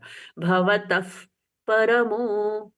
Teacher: जैसे मुंह से फूंक मारते हैं ना वैसे फ जैसा प्रच्छवास हुआ